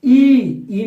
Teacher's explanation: ई में भी ओठ फैल रहा है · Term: अवृत्तमुखी